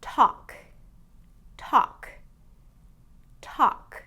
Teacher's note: Now this one is t, ah, k. you'll notice that that L sound has no pronunciation in this word